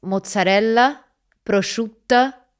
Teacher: in Campania, we have it very often, this schwa sound at the end of a word. It is written in phonetics and so on, it's written as an E upside down.